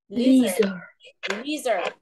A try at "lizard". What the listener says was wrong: Nó có âm đờ nữa ha.